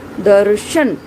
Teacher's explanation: जो र का यहाँ उच्चारण है वह आधा है और श का उच्चारण पूरा है। तो यहाँ पर जो र है रेफ के रूप में लगा हुआ है वह जो है स्वर रहित है, और जिस वर्ण के ऊपर वह लगा हुआ है वह वर्ण स्वर सहित है।